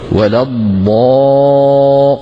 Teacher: ثم نمد بمقدار يا موسى، أو بمقدار نوحيها، يعني بمقدار 6 حركات. ولا الضا. قالوا هذا 6 حركات، يعني إذا كان المد الطبيعي حركتين معناها 3 أضعاف المد الطبيعي.